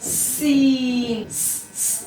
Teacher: सीन में सीटी की सिफत भी है। सीटी किस तरह करेंगे, सीन।